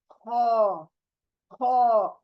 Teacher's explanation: ख, यानी खकारते हैं ना जहां से, वहां से ये लेटर निकलेगा। तो ये ऊपरी हलकी आपके हिस्से से बाहर निकलना है।